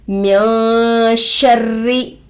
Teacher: नूने साकिन के बाद हुरूफे इख्फा में से शीन आकर है. नून के आवाज़ को नाक में छुपाकर पढ़ेंगे. इख्फा का मिकदार एक अलिफ का बराबर है.